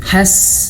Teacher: sin itu dia memiliki sifat mengalir nafas, hams, mengalir nafas, maka dialirkan ketika dia sukun